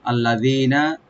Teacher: আল্লাযীনা জালটাকে লামটাকে ওপেন করে জালটাকে একালিফ টেনে, নুনে কোনো টান নাই